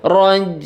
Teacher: ainnya itu dibaca setengah ya, enggak dihilangkan, jangan raj ya, tapi raj.